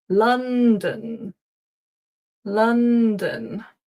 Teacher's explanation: the don is actually a schwa, it's dun.